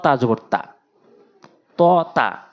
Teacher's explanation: একই জায়গায় উচ্চারণ জিহ্বার আগা সামনে দুটি দাঁতের গোড়া পার্থক্য কোথায় ত টা মুখ একটু গোল হবে পুর হবে তা